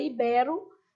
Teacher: ibero se pronuncia inclusive de forma aberta